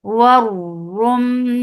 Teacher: Waru for makhraj of waw circle lips, attach with ra. Ra will be heavy because there is dhamma on it. Warum and Ra will be heavy, and you will attach it with Meme, and Meme will get sifa gunna.